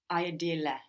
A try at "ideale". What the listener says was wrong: The I, we don't pronounce it like I, like in ideal, do we? How do we pronounce it in Italian? Like ink. You have a lot of vowels to think about here. English fuses them together. In Italian, you will take the time to pronounce each vowel, and then we will stick another E on the end, of course, for Italian.